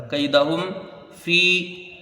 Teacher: یعنی میم کو ظاہر کر کے بغیر غنہ کے جلدی پڑھا جائے گا۔ کیدہم فی، یا مدہ ہے، کھینچ کے پڑھی جائے گی۔ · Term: اظہار شفوی